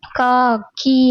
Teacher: அதே மாதிரி நெடில் எழுத்தை ஒழிக்கும் கால அளவு 2 மாத்திரை